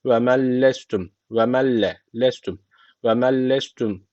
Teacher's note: Yani şu L harfini şeddeli okunmamız gerekiyor. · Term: idgamı bilagune